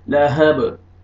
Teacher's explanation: बा साकिन है, बा हरूफ क़लक़ला में से है, यहाँ पे डबल साउंड आएगा, लहब, हा को आपने अपने अपने मखरज से अदा करना है ताकि हा में मिक्स ना हो, लहब नहीं, लहब, सयस्ला नारन ज़ात लहब, ठीक है।